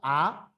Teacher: Para producir la A, la lengua se queda al centro y abajo. Entonces la A es baja central. Y como la lengua está hacia abajo, A, entonces obliga a abrir la boca. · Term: baja central abierta